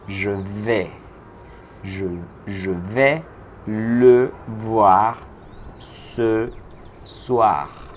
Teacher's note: Mientras que ve, la e del verbo ve, es una vocal más abierta incluso que la e en español